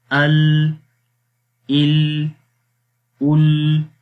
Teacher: لام کے اندر زبان کی سائڈ سے جو ہے وہ آواز باہر نکل جاتی ہے · لام حرف کے اندر صفت انحراف ہوتی ہے، یعنی کہ آواز جو ہے وہ نیچے سے جب آتی ہے تو اس کو آگے کوئی سپیس نہیں ملتی اور سائڈ سے آواز پھر نکل جاتی ہے